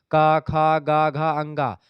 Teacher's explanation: क ख ग घ अंगा ये आपके कंठ से निकलते हैं